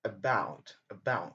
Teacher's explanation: About, c'est la deuxième syllabe qui est accentuée. Et donc, la première syllabe est elle-même choix et n'est pas accentuée.